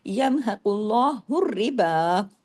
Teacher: قاف کے اوپر پیش کی وجہ سے آگے اللہ کے نام میں لام بھی ہیوی ہو جائے گا